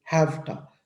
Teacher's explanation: We tend to produce a voiceless version of the preceding sound, resulting in what sounds more like fa than va.